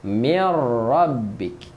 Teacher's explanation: Okey, dengung apabila tanwin bertemu mim. Tapi nun mati bertemu ra, tak ada dengung, kita hanya masukkan sahaja. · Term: idgham